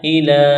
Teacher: ہے، اس کو کھینچنا نہیں ہے۔ تعالوا الی، حمزہ زیر ای، لام کڑا زبر لا، ایک الف کے برابر کھینچنا ہے